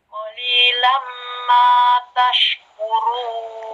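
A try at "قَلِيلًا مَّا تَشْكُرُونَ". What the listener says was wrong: Lam kurang.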